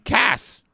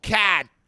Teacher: I want you to hold the firing pin on that gun. Don't let the T go out. Cat. Cut it off.